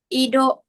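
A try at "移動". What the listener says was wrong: i-nya di akhir harus agak panjang ya.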